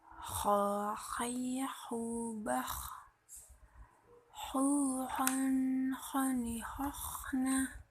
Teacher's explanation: Cara melafalkan huruf kha dikeluarkan dari tengah tenggorokan dekat dengan rongga mulut, diucapkan lembut suara tanpa mengalirnya udara.